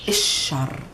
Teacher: We don't pronounce the L of the article a lot. We can say easily and simply الشر.